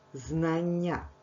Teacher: Подовжений м'який приголосний звук, який ми позначаємо двома рисками та двома крапочками. Дві букви н позначають один подовжений звук.